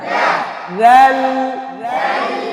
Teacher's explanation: লামে একটু করে আওয়াজ অল্প জারি তাওয়াসসুত হবে হ্যাঁ এই লামে অল্প আওয়াজ জারি বেশিও না এবার না দাল